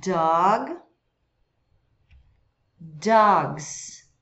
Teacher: Note que o O não é um O puro, simplesmente aberto, ele puxa um pouco para a letra A